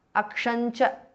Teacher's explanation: Aksham ends in Anuswara followed by Cha. It becomes Akshancha.